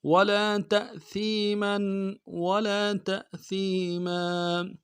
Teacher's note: سا کو یا کے ساتھ ملائیں گے، یا مدہ ایک مقدار میں کھینچیں گے، میم کے اوپر تنوین ہے غنہ کریں گے.